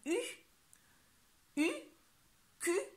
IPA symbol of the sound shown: y